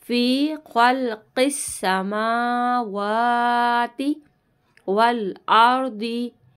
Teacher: ख्वा और क़ाफ हर्फ मुस्तालिया, इन दोनों को मोटा पढ़ेंगे